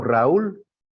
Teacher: la U tiene que sonar más fuerte que la A